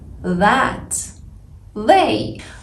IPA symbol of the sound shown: ð